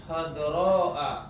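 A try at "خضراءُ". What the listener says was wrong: Ahsan khadra'u. Kenapa antum khadra'a? Kenapa antum patahin?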